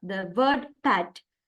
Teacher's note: For example, per, the word pat, it produced with using both lips. Therefore, it is bilabial.